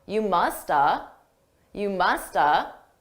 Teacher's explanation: I didn't actually say have I reduced that entirely to just uh